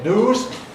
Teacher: Like Londoners, Americans drop yod after N. So they say news typically rather than news. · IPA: /nuːz/